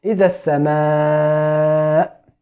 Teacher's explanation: In the word as-sama, you will find on the top of the alif a small wave, so you should prolong more than the natural prolonging, 4 or 5 or 6 counts.